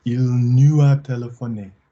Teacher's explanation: Can we have a little bit of a link between nous and a?